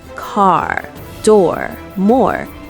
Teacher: the strong American R sound. We curl our tongue